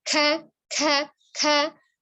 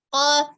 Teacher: Ada yang kerasnya di depannya, kemudian lembeknya di dalamnya, berarti bunyi ko itu lebih ke dalam daripada ka yang kaf ya.